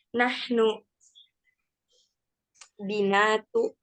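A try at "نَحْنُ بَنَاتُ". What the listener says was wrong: Bukan binat, tapi banat. Banat ini adalah bentuk jamak dari bintun. Banat itu anak-anak perempuan. Jamak.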